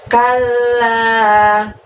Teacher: L-nya double, la-nya panjangnya 2